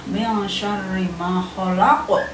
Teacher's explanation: ada nabrotan qawiyatan ketika kita mengucapkan huruf ko atau pantulan yang kuat